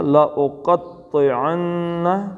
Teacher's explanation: نون کو کھینچنا ہے تھوڑا سا